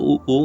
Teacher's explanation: स्वर की बात करें तो ऊ तो उसके ओठों की शेप गोल हो जाती है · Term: ओष्ठ